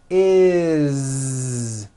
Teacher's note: It's never is, unvoiced, never. It's always is with a voiced Z.